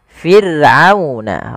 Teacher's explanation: ada huruf ra yang didahului dengan huruf kasrah, maka ra-nya tipis, tidak boleh dibaca tidak, tapi fir'auna, ra-nya tipis, kita namakan dengan ra tarqiq.